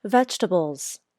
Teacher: I say vegetables this word also has a dark L but for this word my tongue tip doesn't come up for the dark L it pushes against the back of my bottom front teeth